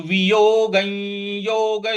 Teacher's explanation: वियोग के ऊपर जो अनुस्वार है उसका य के साथ में उच्चारण करना है, क्योंकि आगे य लिखा हुआ है।